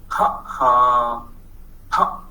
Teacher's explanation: the glottis makes the first sound, and the sound is ha